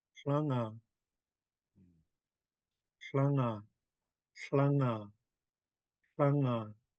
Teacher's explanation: we're starting with our tongue behind our upper front teeth, and we're pronouncing the HL blend